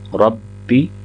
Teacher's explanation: زبر ہے 2 سیکنڈ لمبا کریں، سبحان ربی العظیم، ربی العظیم، با کو لمبا نہیں کریں گے، با کے نیچے زیر ہے، را کو با کے ساتھ ملائیں گے ، ربی، پھر یا کو لام کے ساتھ، یل، بعض اوقات